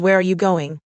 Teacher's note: The intonation usually falls at the end.